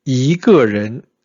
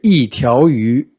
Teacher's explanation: when we say yi ge ren, this is the second tone. When we say yi tiao yu, it's a fourth tone.